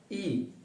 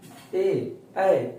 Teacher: वैसा स्वर जिसके उच्चारण में जीभ का आगे का भाग काम करता हो, जीभ के आगे के भाग पर जोर पड़ता है, जीभ के आगे का भाग पर महसूस होती है, अग्र स्वर कहलाता है।